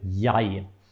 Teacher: And then we have one word that is completely irregular in its pronunciation, and that's this word I, and we say jeg. It's almost like in English, just that at the beginning also we have the y, jeg. So for some reason, we write it completely differently than we pronounce it.